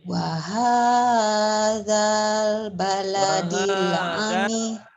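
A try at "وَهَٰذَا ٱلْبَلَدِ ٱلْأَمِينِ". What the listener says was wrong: wahadal A-nya alif hamzah, jangan ain. Bukan itu amin.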